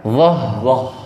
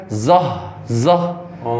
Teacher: Huruf dha ujung lidah ketemu gigi depan atas. Dan pangkal lidah kita dinaikkan.